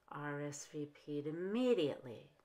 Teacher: Musk to the party and musk rsvp'd immediately rsvp'd immediately here the first syllable of immediately is unstressed so the D and rsvp'd and the first syllable of immediately can be at the same low pitch